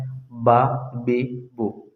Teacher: با یہ دونوں ہونٹ کے گیلے حصے سے ادا ہوتا ہے